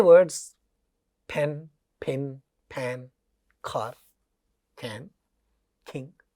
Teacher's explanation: ये पहला साउंड का पहले 3 वर्ड्स में प और दूसरे 3 वर्ड्स में ख थोड़ा सा एस्पिरेटेड होता है।